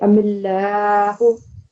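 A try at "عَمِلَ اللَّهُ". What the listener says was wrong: Excellent, very good.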